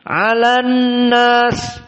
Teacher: Maka annas nun musyaddadah harus makhrajnya dari khaisum ada 2 harokat.